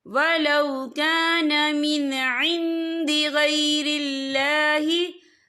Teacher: या देखिए वलौ कान मिन इंद, यहाँ नून साकिन है, नून साकिन के बाद जो है दाल आ रहा है, और दाल जो है इफ़ा का वर्ड है, तो हम यहाँ इफ़ा करेंगे, नून साकिन की आवाज को नाक में छुपाएंगे